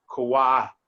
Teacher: Once in a while, U makes not a oo sound, but it makes a wa sound.